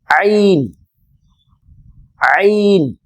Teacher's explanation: அடுத்து எடுத்து பாருங்கள் ஐன் ஐன் ஐன் இதை தொண்டை எழுத்து என்று சொல்வார்கள் ஐன் என்று சொல்லும் பொழுது தொண்டையிலிருந்து அந்த சப்தம் வரவேண்டும் ஐன் ஐன் ஆரம்பத்தில் இது எழுதப்பட்டால் அந்த மேல் மேலே இருக்கக்கூடிய இந்த பகுதி